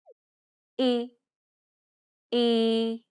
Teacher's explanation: like the double e sound in the word c except your tongue is a little bit further back in your mouth in a more centralized position